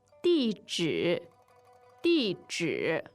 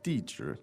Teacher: 地址 fourth and third tone